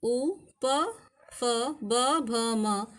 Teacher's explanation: उसके बाद है उपपदमानीय नाम ओष्ठौ अर्थात उ प फ ब भ म तथा उपदमाने का उच्चारण स्थान ओष्ठ है